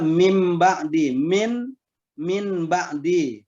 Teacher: menukar bila anda nun sukun atau tanwin ketemu dengan Mbah maka bacaan nun sukun atau tanwin nya kita ganti ya kita tukar dengan bacaan mim sukun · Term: iqlab